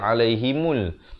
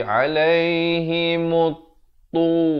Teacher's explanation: Di sini alif lam syamsiyah, lamnya tidak dibunyikan. Jangan baca alaihimul, tetapi alaihimut tu.